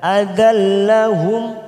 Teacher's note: Adallahum masuk kata huruf lam yang bertasdid. Adallahum, mim sukun bertemu hamzah kita baca jelas idhar safawi